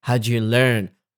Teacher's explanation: I am biased not to say do with overstress. I de-stress it. And I stress the verb.